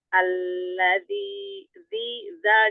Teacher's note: ujung lidah bertemu dengan bertemu dengan gigi di atas gigi seri atas